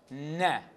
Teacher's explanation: producing what is called alveolar nasal